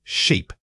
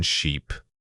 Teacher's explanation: make sure you are actively stretching the e sound. Think of reaching your mouth into a wide smile and maintaining that shape while speaking.